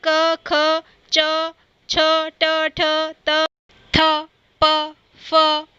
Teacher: ये सारी ध्वनियाँ जब भी हम बोलते हैं तो हमारे गले में कंपन नहीं होता है। तो ये ध्वनियाँ, ये वर्ण अघोष ध्वनियों के अंतर्गत आ जाते हैं।